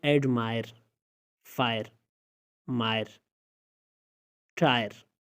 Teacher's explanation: इनमें आप देख सकते हैं कि आ ए की आवाज़ इनसे निकल रही है, आई से। एडमायर तारीफ़, फायर आग, मायर कीचड़, टायर ठोकना।